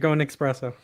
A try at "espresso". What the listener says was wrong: There's no X in espresso.